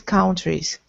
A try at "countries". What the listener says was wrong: By the way, pronunciation. Countries. Not ow, but countries. I'm still hearing kind of an but I want to hear an like sun. Country. Sun. Country.